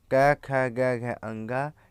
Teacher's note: क वर्ग में क ख ग घ अंगा ये कंठ का स्पर्श करते हैं